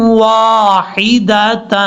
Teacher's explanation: تا کو واو سے جب کنیکٹ کریں گے تو غنہ بھی کیا جائے گا